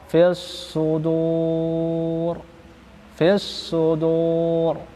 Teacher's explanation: fis sudur ini juga dibaca tebal ketika ro berada pada akhir kata.